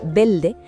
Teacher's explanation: pronunciar la palabra verde como si fuera belde es un rasgo fonético del acento caribeño